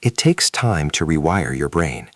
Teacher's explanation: A native speaker will naturally link takes time and blend your brain. It flows like a smooth continuous wave of sound. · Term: connected speech